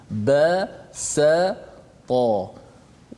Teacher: Pangkal lidah kita tak terangkat menyebabkan huruf tu nipis. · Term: huruf istifal